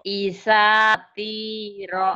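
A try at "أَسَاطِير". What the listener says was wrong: Bukan isa tapi asa. Asatiro.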